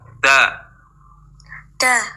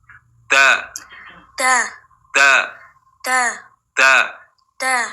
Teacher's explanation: makhraj huruf Dal ujung lidah bertemu pangkal gigi seri atas